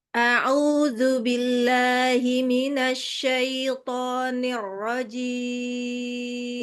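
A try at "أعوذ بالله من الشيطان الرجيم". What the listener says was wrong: Nirlah, bukan nirrojim, jangan sampai terlalu dalam. Nirrojim. Hati-hati, coba tasdidnya pengen saya dengar yang lebih mantap lagi. Tasdid, huruf double ya. Jadi billah. A'udzu billahi minasy syaitan. Huruf shin juga ya.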